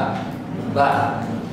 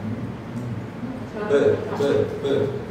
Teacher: Sifat yang pertama jahar, tidak mengeluarkan nafas. Terus ada lagi syiddah, tidak mengeluarkan suara.